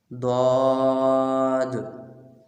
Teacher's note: یہ صرف ایک ہے۔ یہ زبان کی کروٹ اور اوپر کی داڑھوں کی جڑ سے ادا ہوتا ہے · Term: حرف حافیہ